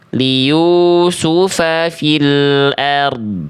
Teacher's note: Nah, dotnya yang lebih mengalir karena sifat huruf dotnya rokhawah.